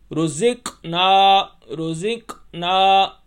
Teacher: کاف کے اوپر جزم ہے یعنی کاف ساکن ہے، اس لیے ہم جھٹکا دیں گے۔ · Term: قلقلہ